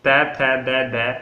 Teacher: तो जीभ सीधा जाकर दांतों से टकरा रही है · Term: दंत्य वर्ण